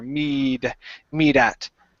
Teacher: I even pronounce what's called a flap T, and I say me that.